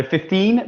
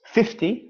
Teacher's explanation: So 15, the stress is on the second, of course. 50, the stress is on the first syllable.